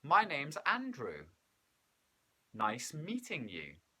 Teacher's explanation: Now, when we are giving a statement, we often will use a rising, falling intonation. So our voice goes up at the end and then goes down at the very end,